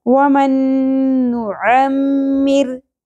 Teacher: وسط حلق سے ادا ہوگا عین، باریک آواز کے ساتھ۔ وَمَن نُعَمِّرْ، را باریک پڑی جائے گی کیونکہ را ساکن سے پہلے زیر آ گئی، تو جب بھی را سے پہلے زیر آ جائے یا را کے نیچے زیر آ جائے تو را باریک پڑی جاتی ہے۔ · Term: عین کا مخرج